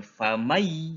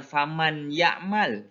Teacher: Nun matinya kita leburkan. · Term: idgham bigunah